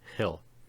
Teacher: The vowel sound in hill is pharyngalized, and you can feel the root of your tongue is pulled back in comparison to the first.